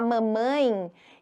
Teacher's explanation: o ditongo nasal o som sai pelas fossas nasais